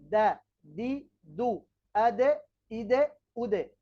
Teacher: তার সিফাত কি রয়েছে ভিন্ন ভিন্ন রয়েছে তাহলে 11 নম্বর মাখরাজ জিহবার আগা সামনের উপরের দাঁতের গোড়ার সঙ্গে লাগিয়ে ত দাল তা